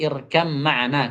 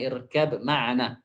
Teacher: Maka ba itu akan hilang secara keseluruhan, kata beliau. Tidak ada tersisa lagi huruf ba itu. Pengucapannya berubah menjadi irkam ma'ana, kata beliau, bukan irkab ma'ana. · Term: idgham mutajanisain